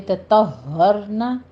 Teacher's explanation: ہا کے پر تشدید ادا کیجیے، ایک تہ اور پھر ہر. تطہرن، را مفخم پڑھی جائے گی.